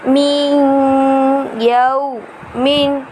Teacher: من وراق الجنات، میم نون یا زیر من یا واو زبر یو من یو میم دو زیر من یو من، نون ساکن کے بعد حرف یرملون کا یا آ رہا ہے، اسی لیے یہاں پر ادغام ہوگا یعنی غنہ کر کے ادا کریں گے۔